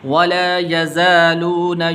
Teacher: تو اس لام کو تھوڑا سا لمبا کرنا ہے، ولا یزالون، یہاں پر یہ زا ہے، ذال نہیں پڑھنی